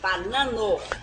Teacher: O A tem que ser aberto assim, banano. Não, aqui na verdade quando eu falo banano, eu estou tentando evitar a nasalização.